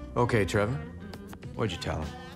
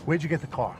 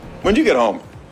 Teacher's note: In fast speech, did is often reduced or modified. In this case, the speaker only pronounces it as a D sound.